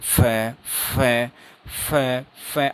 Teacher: आपके जो होठ हैं ये कम खुल रहे हैं, उनमें नैरो ओपनिंग हो रही है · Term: फ्रिकेटिव्स